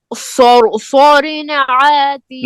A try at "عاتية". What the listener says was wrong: نہیں صرصرین نہیں ہے صرصر عاتیہ قلقلہ نہیں کرنا عین کو قریب کرو عاتیہ